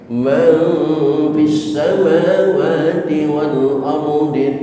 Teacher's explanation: Suara huruf imbuhannya adalah suara M. Bukan suara ng dan juga bukan suara N tapi suara M.